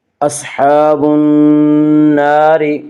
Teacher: نون مشدد غنہ ہوگا، غنہ کی مقدار 1 الف ہے۔